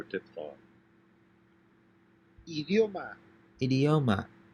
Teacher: it's pronounced like the eo in the english word video yo except that's as always it's a shorter sound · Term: diphthong io